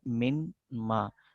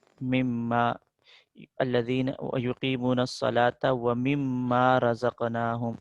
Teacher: نون کا میم میں ادغام کر دیا جاتا ہے ، تو من الگ ہے، من حرف جر میں سے ہے،